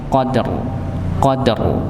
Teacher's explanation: ditebalkan rnya Nggih Qadr Qadr ya dengan apa mengangkat pangkal pangkal lidahnya otomatis rahang bawahnya juga akan ikut terangkat